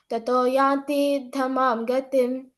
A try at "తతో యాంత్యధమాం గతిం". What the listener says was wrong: యాంతి కాదు, తతో యాంత్య ధమాం గతిం. తతో యాంత్య ధమాం గతిం, అంతే. యాంత్య ధమాం గతిం.